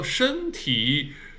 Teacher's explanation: 身体 first tone 身 and 体 third tone.